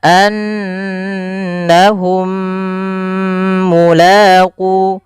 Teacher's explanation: Idgam mimi ini cara membacanya mim yang pertama masukkan yang mim kedua kemudian ditahan. Maka annahum mulaqu ditahan dulu. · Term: idgham mimi